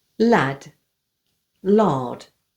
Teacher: Lad, lard. Notice no R sound.